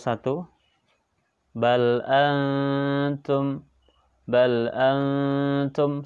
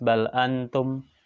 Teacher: samar-samar ya tapi ada selipan ghunnah di sana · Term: ikhfa Haqiqi